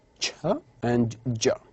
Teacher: those sounds which are produced as stops at the beginning and released as fricatives at the end, such as ch and j. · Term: Affricatives